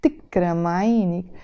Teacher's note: Now this تكرم عينك expression, I can say it in a normal way, تكرم عينك, but many times You see, I'm going to change the tone of my voice and say tikram aynik with this stress on the k